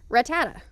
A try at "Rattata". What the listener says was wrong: You're stressing the wrong syllable. It's da, da, da, da, da, da.